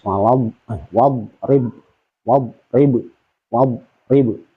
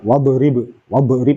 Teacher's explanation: jangan diqalqalahkan karena huruf Dad itu tidak termasuk huruf Qalqalah